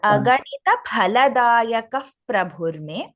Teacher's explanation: In Sanskritam, we do not have the word fa. It is pha.